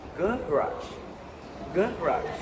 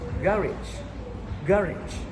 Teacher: garage is stressed at the front